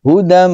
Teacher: Hudan, asalnya hudan, ditulisnya hudan mir rabbihim, dibacanya idgham ya, idgham. Jadi tanwinnya masuk pada huruf mim.